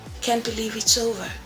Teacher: Now, with sadness, we have a lower pitch, we have a slower tempo, and we have a softer volume.